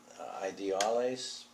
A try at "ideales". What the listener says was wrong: No. Ideales. The ideales. The first word is ideales. No, it's not ideals. It's ideales. Ideales. Ideales. Ideales.